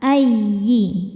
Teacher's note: Ya tasydid dibaca dengan naber, jadi nggak perlu ditahan ya. Naber itu menaikkan intonasi suara kita. Ayyi. Jadi kalau sebelumnya tidak ada tanwin atau non sukun jangan ditahan.